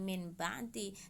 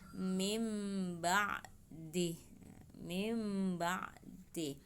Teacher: nun sukunnya diganti dengan huruf mim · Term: iklab